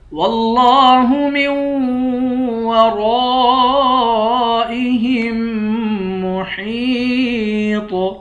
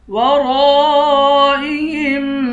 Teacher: ورائہم، را کے بعد الف ہے، الف حروف مدہ ہے، الف پر مد بھی ہے، اس مد کو 5 الف کی مقدار کھینچ کر پڑھیں گے۔ ورائہم، ہا کو میم کے ساتھ ملا کر میم پر غنہ کریں گے، اس ہا کو یا کے ساتھ ملا کر یا کو ایک الف کی مقدار کھینچ کر پڑھیں گے.